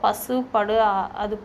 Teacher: பசு, படு, அது போன்ற சொற்கள் இதழ் குவிழ்ந்து நன்கு ஒலிக்கப்படுது